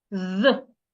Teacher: Now, if it is the voiced TH, for the voiced TH, you put your tongue in between your upper teeth and your lower teeth, and you make vibration. You make sure that your vocal cord vibrates like this.